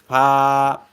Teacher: এই দেখুন ফা উচ্চারণ করার নিয়ম, নিচের ঠোঁটের প্যাট উপরে দুই দাঁতের আগার সাথে লাগাইয়া উচ্চারিত হয় ফা